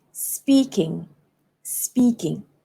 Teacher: I have to stress on speak